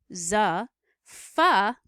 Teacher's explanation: is what we call a fricative because it involves a little bit of friction between lips uh-uh-uh-uh and sha all of them have a partial airflow obstruction